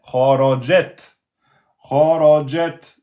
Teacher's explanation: ici le ta soukoun c'est comme le kef soukoun on bloque on lâche le souffle d'air